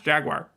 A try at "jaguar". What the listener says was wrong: Yeah, you say wire with an I sound in the middle there. it's just jaguar.